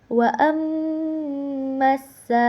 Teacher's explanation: alif panjang ee yang bertemu dengan huruf hamzah maka dibacanya 4 sampai 5 harakat. Eh, hukum tajwidnya yaitu mad wajib muttasil.